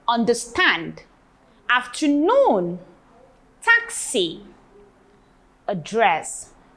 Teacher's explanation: the stress is on taxi on the first syllable while others take the stress or have their stress on the second syllables